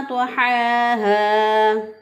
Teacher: तो इन हरूफ को हुरूफ मुस्तालिया इसलिए कहते हैं क्योंकि इन हरूफ की अदायगी में ज़ुबान ऊपर के तालों की तरफ उठ जाती है, इसलिए ये मोटे अदा होते हैं।